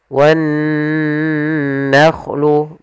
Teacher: Kemudian pada lafal nun bertasydid di sini ada bacaan gunnah, yaitu adanya nun bertasydid. Cara membacanya ditahan dulu suaranya wan nakhlu, baru dilanjutkan ke gunnahnya.